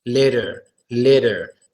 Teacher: we actually pronounce the T sound as a soft d sound